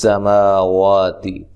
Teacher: مل لام کو ہلانا نہیں ہے۔ کس سماواتی سین کو باریک سیٹی سے، ما وا دونوں مد اصلی، اور تا کو باریک پڑھنا، لمبا نہیں کرنا